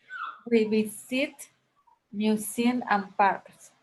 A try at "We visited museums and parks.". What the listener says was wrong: Yes, remember in past tense, some verbs, regular verbs with ed at the end, you must pronounce the ed, like visited. We visited museums and parks.